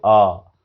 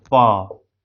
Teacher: अ में ज्यादा घर्षण हो रहा है, प में घर्षण नहीं के बराबर होगा, इसलिए वॉइसलेस हो गया प।